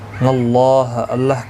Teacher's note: اللہ کا لام اس زبر کی وجہ سے پور پڑا جائے گا. اس کے اوپر کھڑی زبر بھی ہے، ایک الف کی مقدار کے برابر کھینچ کر بھی پڑھیں گے.